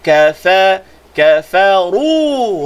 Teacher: ru baca tebal. Ru dua harakat